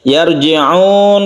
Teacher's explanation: Yarji'un, kemudian di sini ada sukun ro yang sebelumnya fathah, kita baca tebal atau tafkhim, disebut juga mufakhama.